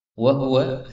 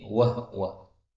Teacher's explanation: Wa huwa, haknya boleh disukun menjadi wahwa